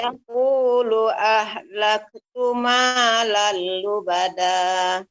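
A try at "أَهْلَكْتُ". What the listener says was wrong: Tapi untuk kaf Ibu perlu ditambahkan lagi ahlaktu. Ahlaktu.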